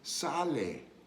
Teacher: the last E, which is not pronounced in English, is pronounced in Spanish, always pronounced in Spanish